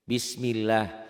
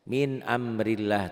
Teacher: Kenapa dibaca lafaz Allahnya tipis? Tuh, sebelum lafaz Allah baris di bawah kasroh. Min amrillah tuh, sebelum lafaz Allah baris di bawah kasroh.